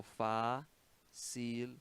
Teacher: No caso de facilmente, se considera uma palavra com duas sílabas tônicas.